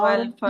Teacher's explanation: ایک ہا جو ہے آپ کے حلق سے نکل رہی ہے، وسط حلق سے، اور دوسری جو آخری ہے دوسری ہے وہ سینے سے نکل رہی ہے.